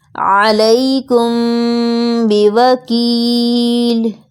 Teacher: غنہ کے ساتھ اخفاء کرتے ہوئے دونوں ہونٹوں کو آپس میں ملا لیں گے۔ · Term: اخفاء شفوی